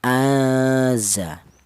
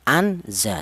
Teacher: Ada dengungnya dua ketukan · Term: ikhfa